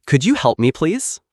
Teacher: Use a little rising tone at the end of your question.